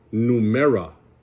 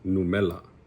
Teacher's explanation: Even when, this is really funny, because even when words have the letter R in the word, it's so hard to pronounce for a native Samoan speaker that it gets turned into la more than it actually gets used as the ro